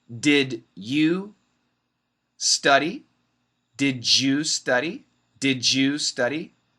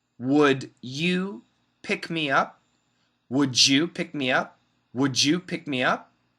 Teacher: D + y equals J